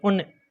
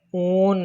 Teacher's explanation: ऊ को जल्दी से बोल दिया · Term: लघु स्वर